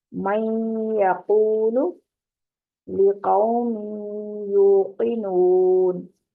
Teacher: زبان کو یا کے نکلنے کی جگہ پر لگا کر یعنی اس کے مخرج پر لگا کر نون کی ادھوری آواز کو ناک کی جڑ سے نکالتے ہوئے غنہ کی ادائیگی کی جاتی ہے